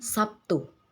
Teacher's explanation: Dalam bahasa Indonesia lazim diucapkan Sabtu. Terdengar bunyi B berubah menjadi bunyi P sebagai akibat dari pengaruh bunyi T. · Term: asimilasi